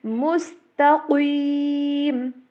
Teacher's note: صراط، کچھ لوگ پڑھتے ہیں صراط نہیں ہے، ٹھیک ہے، صراط، پھر میم سین تا، ان کو باریک پڑھیں گے، قاف کو ایک دم سے درمیان میں پر کریں گے، یا کو اور میم کو اگین باریک کریں گے۔